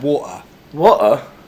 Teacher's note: now make the t a glottal stop